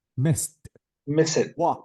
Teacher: delete the e sound and replace the D with t